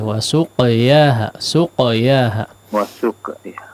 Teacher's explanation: Kemudian qafnya diperhatikan qalqalahnya